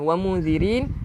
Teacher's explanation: Dia adalah ikhfa haqiqi. Ikhfa haqiqi, lidah kita kena letak di tengah-tengah, di antara lelangit dan bawah lidah. Tak boleh kena lelangit nah.